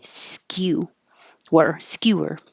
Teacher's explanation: It's starting with a high position like a Y.